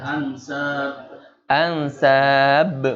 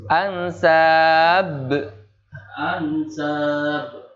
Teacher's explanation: Kol-kolahnya kol-kolah kubro ya. Ketara sekali atau kelihatan sekali, jelas banget.